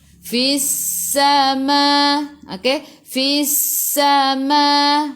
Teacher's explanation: sifat huruf sin safir, kena bunyikan